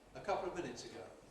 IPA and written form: ə ˈkʌpləv ˈmɪnɪts əˈgəʊ (a couple of minutes ago)